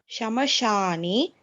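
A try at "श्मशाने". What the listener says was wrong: It is not Shamashane. It is Shma. Shmashane. You're doing the same mistake. It is Shmashane. Shmashane. Mashane, not Shamashane.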